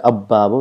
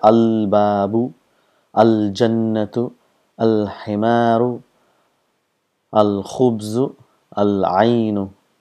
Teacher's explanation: Those letters which comes next to the lam, where both lam and the sound of the next letter is produced, is called huruful qamar.